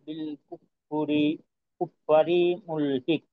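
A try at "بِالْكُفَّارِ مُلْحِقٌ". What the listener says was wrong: হুম, কুফারি, এখানে একটু টান আছে। আর শেষে এই, আচ্ছা শেষে তো কফ, যদি এখানে কলকলা না করা হয় সেক্ষেত্রে কিন্তু কাফের উচ্চারণ হয়ে যাবে। হিক, ক, হিক, ওই জি, মাখরাজ থেকে পৃথক হওয়ার সময় অতিরিক্ত একটা ধাক্কার আওয়াজ থাকবে, এটা থাকতেই হবে।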